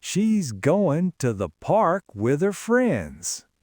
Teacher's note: Parks and friends are the destination of the thought. They get the energy.